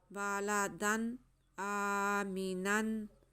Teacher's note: हमारे पास दो ज़बर है, तनवीन है, उसके बाद हमज़ा है, इसलिए यहाँ पे इज़हार होगा। तनवीन को वाज़े करके पढ़ेंगे और उसके बाद यहाँ पे हम वक्फ़ करेंगे।